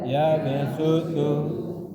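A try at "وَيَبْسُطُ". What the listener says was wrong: Bastotan. Jadi ya, jangan dibaca shad, dibaca sin.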